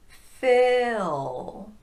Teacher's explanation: The tongue is slightly lower on that I sound and a bit more relaxed.